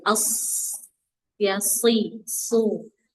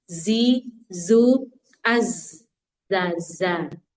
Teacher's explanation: shod, sin, dan zai kita akan mendengar adanya suara tajam